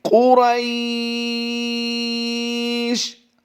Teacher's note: شین کی تنوین کو ہم نے جزم سے بدل کر وقف کرنا ہے یہاں پر